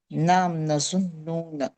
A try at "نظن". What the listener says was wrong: Not nazununa. This is nazunnu. Nazunnu. It does not have vaw noon. Never have vaw noon.